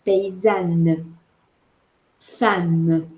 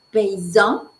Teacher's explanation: c'est une voyelle orale et non pas une voyelle nasale